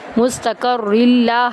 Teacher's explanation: دو زیر کو لام کے اندر داخل کریں گے سختی کے ساتھ